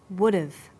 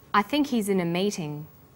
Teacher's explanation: when unstressed words begin with the letter H the H sound is often dropped in Connected speech